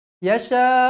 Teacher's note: mad wajib muttasil empat atau lima harakat